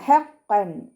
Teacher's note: തെൻവീനുള്ള നൂനിൻ്റെ സൗണ്ടിനെ വ്യക്തമായിട്ട് ഉച്ചരിക്കുക, മണിക്കാതെ ഉച്ചരിക്കുക